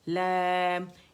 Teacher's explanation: اچھا دیکھیں اس کی جو ہم مد کھینچتے ہیں نا اس کی آواز ناک سے نہیں آنی چاہیے